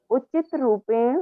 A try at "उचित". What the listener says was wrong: उचित नहीं, उचित बोलेंगे तो त में हलंत होना चाहिए।